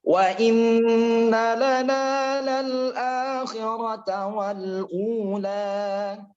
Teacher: Wa inna hukumnya gunnah. 3 harokat lagi.